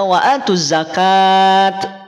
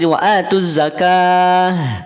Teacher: Maka ketika dibaca sukun tak marbutah berubah menjadi ha. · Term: sukun aridi